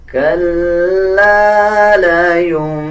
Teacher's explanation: لام کے اوپر شد ہے، لام کو مضبوطی کے ساتھ ادا کیا جائے گا